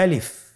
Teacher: আলিফে কিন্তু কোনো টান নেই, আপনারা বুঝতে পারতেছেন। আমি যখন আলিফ বলছি এর মধ্যে কোনো টান হবে না